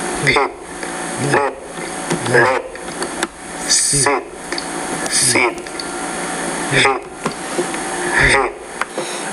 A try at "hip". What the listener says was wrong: Okay, it's just not intelligible. It's not that you're not making that vowel long enough. You're not doing that, but you're just not pronouncing it correctly. So you have meet, mit, peat, pit. So when you say both words, I cannot tell which word you're saying.